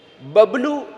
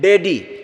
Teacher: पिताजी हम बोलते हैं तो होठ मिलते हैं, लेकिन डैडी आजकल वो शब्द चलता है ना, बच्चे बोलते हैं डैडी, क्या बोलता है डैडी, तो डैडी में होठ नहीं मिलता है, लेकिन पिताजी कहेंगे तो होठ जरूर मिलेगा।